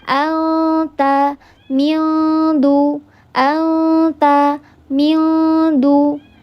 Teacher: Bunyikan nun sukun, huruf nun sukun di makhrajnya huruf ikhfa. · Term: ikhfa hakiki